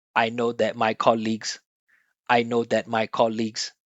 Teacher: everything is the same length everything has just a little bit of pitch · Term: no contrast